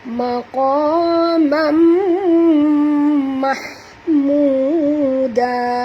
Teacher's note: tanwin bertemu dengan mim, kita kena masuk dan dengung